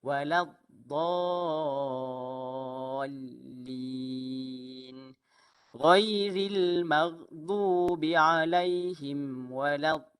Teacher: Tepi lidah kita bertemu dengan gigi geraham kanan atas. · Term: huruf dad